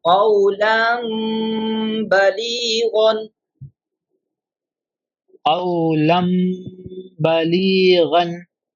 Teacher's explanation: Change the noon sakin or tanween into meem and do gunna, pronouncing with nasalization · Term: iqlab